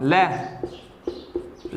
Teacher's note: ल बोलने के अंदर जीभ अपने ऊपर जा रही है, फिर नीचे आ रही है, और जीभ के बगल से हवा निकल रही है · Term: पार्श्विक व्यंजन